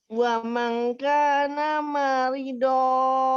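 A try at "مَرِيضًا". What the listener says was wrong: Maridon. Maridnya panjangkan.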